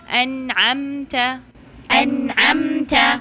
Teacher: پہلے لیٹر حمزہ ہے جو حلق کے آخری حصے سے آئے گا اینڈ دین لیٹر عین ہے جو حلق کے درمیانی حصے سے آئے گا